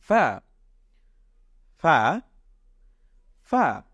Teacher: এই ফা উচ্চারণ করার সময় আমাদের দাঁত এবং ঠোঁট এই দুটোর মাঝখান থেকে হালকা একটু বাতাস বের হবে, তাহলে এটার উচ্চারণটা সঠিক হবে।